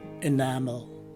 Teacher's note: the stress is in the second syllable, and that the first letter E takes a common letter I sound. The letter A is a common sounding A, and lastly, the second letter E is a swas sounding E.